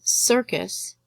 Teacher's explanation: the emphasis is on the sir